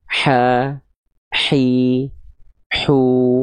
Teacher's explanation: Dia dilafalkan dari bagian tengah tenggorokan kita nih. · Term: H kecil